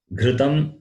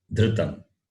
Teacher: Ghru is guttural. Dhru is dental.